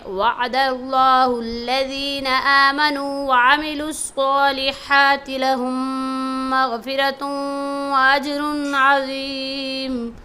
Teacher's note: اس میں صاد کو موٹا پڑھیں گے، لفظ اللہ کو موٹا پڑھیں گے اور لہم کے میم پر شد ہونے کی وجہ سے، نیکسٹ میم پر شد ہونے کی وجہ سے غنہ کریں گے۔